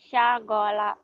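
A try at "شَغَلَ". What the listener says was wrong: Shin. Syagola. Kurang angin tuh.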